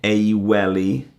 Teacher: you just drop the g off the front of the word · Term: soft mutation